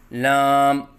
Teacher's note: غلطیوں کی نشاندہی: منہ بند کر کے پڑھنا، جیسے لام، یہ غلط ہے۔ آواز ناک میں لے کے جانا، جیسے لام، یہ غلط ہے۔ آخر میں میم کے اوپر قلقلہ کرنا، جیسے لام، یہ غلط ہے۔